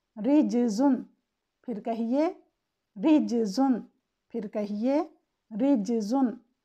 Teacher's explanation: अगर रॉ के नीचे कसरा हो तो उसे बारीक पढ़ते हैं। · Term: रॉ की तरक़ीक़